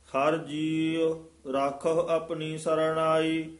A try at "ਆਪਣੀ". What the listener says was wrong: ਆਪਣੀ ਪੱਪੇ ਦੇ ਔਂਕੜ ਹੈ, ਉਚਾਰਨ ਕਰਨਾ ਹੈ।